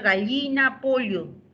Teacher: El yeísmo está extendido en todo el Perú, el yeísmo, excepto en la zona andina, por si acaso. En la zona andina no hay yeísmo